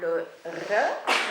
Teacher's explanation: On a le R, qui est le R roulé comme ont les Russes, les Espagnols, etc. Et on a une lettre intermédiaire, qui est le E.